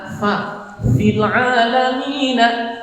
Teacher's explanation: Tapi kalau bacaan Quran fa fil alamina, gigi atas ketemu bibir bawah